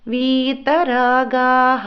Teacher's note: విసర్గాల దగ్గర హ కి కూడా కరం ఇవ్వాలండి